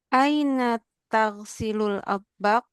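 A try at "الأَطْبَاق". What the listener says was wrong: Atbak, Bapak panjang. Atbak.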